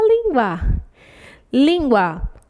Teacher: penúltima sílaba mais forte é uma paroxítona